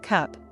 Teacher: In cup, the vowel is more central and relaxed